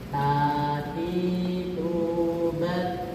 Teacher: huruf ta, ujung lidah bertemu dengan ujung gigi seri atas.